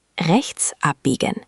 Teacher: Think of it as a very soft H sound after the E.